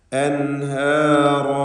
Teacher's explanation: സാക്കിനത്തായ നൂനിനെ ഇൽഹാർ ഹൽഖി നൽകി മണിക്കാതെ വെളിവാക്കണം